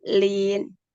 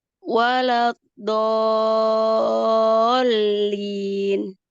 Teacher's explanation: nabar itu sedikit sekali, ya, sedikit hanya untuk menandakan bahwa di situ ada tasdid